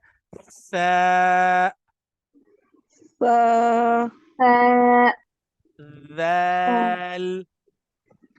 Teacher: जबान की नोक लगेगी ऊपर वाले दांतों के बिल्कुल एज पर। और मेक श्योर ये करना है आपने कि जब आप इन तीनों लेटर्स को अदा करेंगे ना, तो आपके दो दांत आपस में मिलने नहीं चाहिए, बीच में जबान होनी चाहिए।